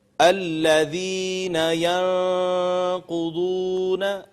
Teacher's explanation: یہ ذال ہے، اس کو بالکل نرمی سے پڑھنا ہے، ہم نے سختی سے نہیں پڑھنا، نہ ہی اس پہ سیٹی کی آواز آنی چاہیے۔